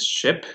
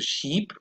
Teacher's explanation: the full description for this is front, high, lax, unrounded vowel. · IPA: ɪ